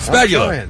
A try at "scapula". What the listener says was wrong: Scapula. you said spatula.